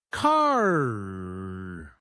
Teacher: American English is what we call rhotic, meaning the R sound is emphasized even at the end of words. In contrast, in British English, that R is often silent.